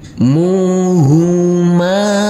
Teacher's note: huruf mim yang berfathah a ini kita baca panjang dengan panjang 2 harokat karena bertemu dengan huruf alif yang tidak berharokat